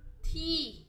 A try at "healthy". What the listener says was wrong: C, T가 아니고 혀를 살짝 물고 C, C 혀를 물줄 모릅니까? C, C, C, healthy.